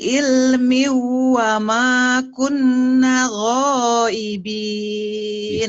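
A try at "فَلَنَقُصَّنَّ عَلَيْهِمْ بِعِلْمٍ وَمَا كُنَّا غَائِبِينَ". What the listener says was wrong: Bisa, tapi guna-gunanya belum nahan. Nah, ini guna yang saya ini. Di nun ini, nah kalau guna ditahan.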